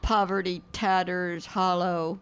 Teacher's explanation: A lot of those words I notice have stress on the first syllable.